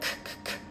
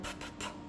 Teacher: we're using this sound back here ckk and then we're going forward to the sound p- p-p so again we can isolate these two sounds in practice CP